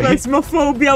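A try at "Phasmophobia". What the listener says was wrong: You said plasmophobia. Plasmophobia. There's no L. Paz. Paz. It's a PH. Paz. Like, just pretend it's an F.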